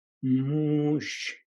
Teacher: so the M stays a little bit longer. So you close your mouth and then for a few seconds more, if you will, to have that double M sound.